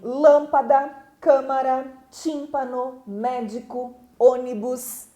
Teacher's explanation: as proparoxítonas que são aquelas em que a sílaba tônica é a antepenúltima